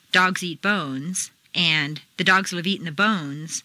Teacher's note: it takes the same amount of time to say both sentences since they have the same number of stresses